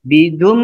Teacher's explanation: Bidum ini tanwin bertemu dengan mim. Dibaca dengung 2 ketukan.